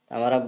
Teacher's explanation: हमारा ब जो होता है सघोष वर्ण होता है